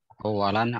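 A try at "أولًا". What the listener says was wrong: Awalan, bukan uwalan. Awalan.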